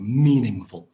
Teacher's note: it's meaningful with the stress on the first syllable